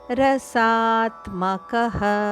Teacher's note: ರಸಾತ್ಮಕಹ ಸದ ಮೇಲೆ ಆಘಾತ ಇದೆ